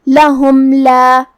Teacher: یہاں میم کا حکم ہے اظہار شفوی، ہمیں اسے ظاہر کرنا ہے اور بغیر غنہ سے حکم کو ادا کریں گے۔